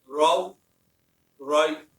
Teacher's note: दोनों जगह रा को मोटा पढ़ा जाएगा, क्योंकि रा दोनों जगह जबर के साथ आ रहा है